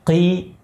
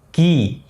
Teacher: Qaf bunyinya lebih dalam, dari bagian paling belakang lidah.